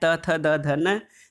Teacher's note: दांत और जीभ के स्पर्श से ये दंत व्यंजन है, त, थ, द, ध, न।